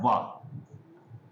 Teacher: वा जब बोलते हैं तो दांत से होंठ टकराते हैं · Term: दंतोष्ठ